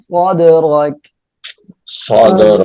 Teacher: এখানে দাল কলকলর অক্ষর সাকিন অবস্থায় আসছে কলকলা করে পড়বো র এর উপরে জবর মোটা করে পড়বো